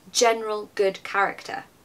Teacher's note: my voice actually goes down when I say general good character? Because it's resolving.